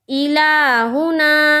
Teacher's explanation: دیکھیے حمزہ کو نہیں کھینچ رہے ہیں، پھر لام کو کھینچنا ہے، کھڑا زبر ہے، پھر ہا کو نہیں کھینچیں گے کیونکہ پیش ہے، پھر نا کو کھینچیں گے کیونکہ وہاں پر الف مدہ کا قاعدہ ہے، تو الہنا۔